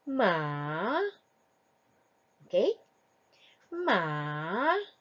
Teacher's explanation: the third tone is yes the falling Rising tone